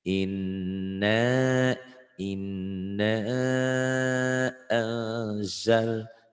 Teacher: Inna tuh, inna jangan enak, i-nya pendek, jangan panjang. Yang panjangnya annya, jamanaknya mad jaiz munfasil.